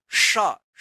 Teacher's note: जीभ जो है ना तालू में जाएगा सटेगा उसके बाद आवाज निकलेगा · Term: तालव्य श